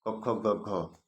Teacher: क ख ग घ, तो इसका उच्चारण स्थान कंठ हो जाएगा।